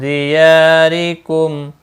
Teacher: یا مدہ ہے، ایک الف کے برابر کھینچ کر پڑھیں گے